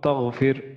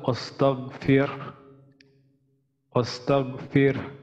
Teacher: এখানে গয়ন আছে, তো গয়নের ক্ষেত্রে আমরা জানি যে গয়ন পড়ার সময় আমাদের যে ভুলটা হয় সেটা হচ্ছে আমরা কলকলা করি